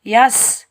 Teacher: سین سیٹی والا حروف ہے، سین کے اوپر جزم ہے، جزم والا حرف ہمیشہ پہلے والے حرف کے ساتھ ملا کر ادا کیا جاتا ہے اور ایک بار ادا کیا جاتا ہے اور بغیر کھینچے ادا کیا جاتا ہے۔